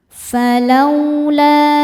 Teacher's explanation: Falau lau ada harfuin atau huruf lin sebab ada wau sukun yang didahului harakat fathah. Cara bacanya cukup dilembutkan atau dilunakkan.